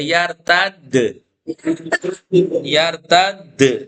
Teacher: کیونکہ پہلے سے تشدید ہے تھوڑا سا جھٹکا باقی رہے گا